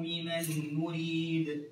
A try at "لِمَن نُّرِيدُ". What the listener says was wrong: زيد الغنة تبننها مليح.